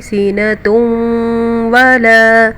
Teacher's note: تا کے اوپر 2 پیش ہے اور واو کے اوپر شد ہے، اس لیے ہم ناک میں آواز لے جائیں گے اس کی